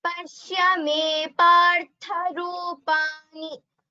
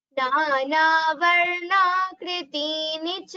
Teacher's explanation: Here Rupani, Divyani, Cha, all these are Hrasvasvaraha. So please do not prolong them.